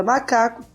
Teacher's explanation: a palavra macaco tinha a sílaba tônica aqui ou seja penúltima